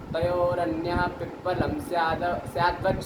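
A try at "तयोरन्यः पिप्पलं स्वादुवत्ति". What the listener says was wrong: स्यादवती नहीं, स्वादवती। स्याद क्या स्याद, स्यादवत थोड़ी ना आएगा। स्वादवती, स्वादुवती, स्वादुकारम यथा स्यात् तथा भूते।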